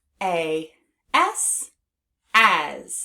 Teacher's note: we pronounce the word as with the Z at the end